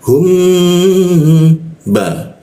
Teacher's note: mimnya itu ditahan dua ketukan baru masuk ke ba · Nah, hijau itu kalau mim bertemu ba ya, itu bukan didengungkan tapi lebih ke arah bergumam ya. Jadi dibacanya itu mimnya itu ditahan 2 ketukan baru masuk ke ba.